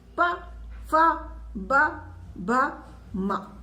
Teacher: पा के उच्चारण में हमारे दोनों होठ आपस में चिपक रहे हैं